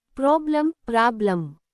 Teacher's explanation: The second syllable, lem, is unstressed and sounds like a. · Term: schwa